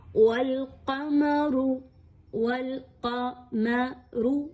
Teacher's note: میم باریک، قاف اور را کو پر پڑھا جائے گا